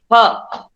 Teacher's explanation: જો હું બોલું છું ફ, હોઠ અને દાંત, ફ દંત્યોષ્ઠ છે પણ અઘોષ છે, કારણ કે નાદતંત્રી કંપિત નથી એમાં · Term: દંત્યોષ્ઠ સંઘર્ષી